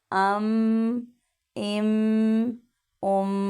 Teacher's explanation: अब इसको अम इम उम नहीं पढ़ेंगे, ठीक है, यानी मीम पे कलकला नहीं करेंगे, बिल्कुल ठहरा हुआ।